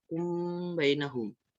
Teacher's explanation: ditahan kira-kira dua ketukan dan Seraya mengeluarkan suara dengung dari pangkal hidung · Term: Ikhfa Syafawi, ikhfa syafawi